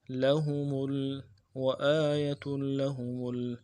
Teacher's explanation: وآیۃ لہم میں لام کے اوپر جو تشدید ہے اس کے اوپر زور دیں گے، اور ہم میں میم کے پیش کو لام کے ساتھ اگلے لام کے ساتھ ملائیں گے۔